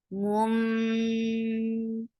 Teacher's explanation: This is ikhfa shafawi. So you're keeping the sound in your nose for a longer time.